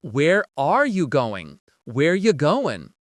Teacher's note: And again, we cut out are.